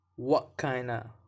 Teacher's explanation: stop T at the end of the what that's because of the next word begins with a consonant very